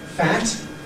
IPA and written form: fæt (fat)